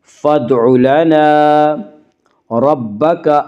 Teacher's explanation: را کو پر پڑھیں گے، را کے اوپر زبر ہے